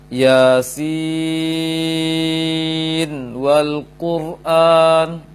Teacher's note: Namun ketika lanjut ke kata berikutnya ada waw wal Quran, maka nun sukun pada penglafazan huruf sin tidak didengungkan, akan tetapi dibaca jelas · Namun kalau lanjut, maka nun tetap dibaca jelas tanpa dengung, sehingga tidak dimasukkan nun ke dalam waw